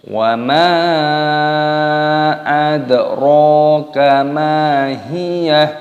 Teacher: Mimnya dibaca mad jaiz munfasil, dipanjangkan 5 ketukan dan di sini dalnya berharokat sukun, maka dipantulkan suaranya, dibaca adro, ronya dibaca panjang, adro kama, memnya dibaca panjang, ada tanda alifnya di sini, matobi'i 2 ketukan, mahiyah, wa ma adro kama hiyah.